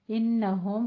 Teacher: انہم غنہ واجبہ کریں گے، ہم میں اظہار شفی